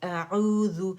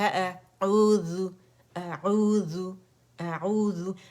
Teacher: حمزہ بھی باریک ہے، عین بھی. اعوذ، اور حمزہ کو عین نہیں بنانا، عین کو حمزہ نہیں بنانا